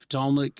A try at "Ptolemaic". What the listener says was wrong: technically, people always get mad when I say It's Ptolemaic. The P is silent.